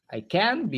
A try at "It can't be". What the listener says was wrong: Bukan I.